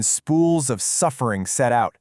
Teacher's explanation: Sibilance is the repetition of S sounds, and here it creates a super sinister, almost hissing undertone.